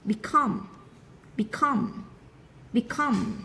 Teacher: trọng âm rơi vào tiết thứ hai nên chúng ta đọc nó cao hơn một chút nhá